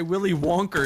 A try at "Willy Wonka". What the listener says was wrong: it just sounds racist. Willy Wonka? Yeah, you're saying Willy Wonker. It just sounded weird.